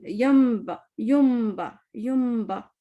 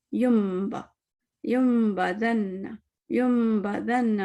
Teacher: नून कट हो गया और हम मीम पढ़ रहे हैं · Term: इक़लाब